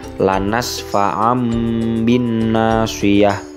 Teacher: huruf Ain bertemu dengan huruf ba sehingganya yang awalnya menjadi nun mati atau tanwin ketika bertemu dengan huruf ba maka berubah menjadi mim mati